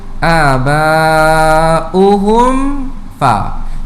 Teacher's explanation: Di situ ada huruf mim yang mati berjumpa dengan huruf fa, hukumnya izhar syafawi, jelas saja, tak perlu dengungkan di situ.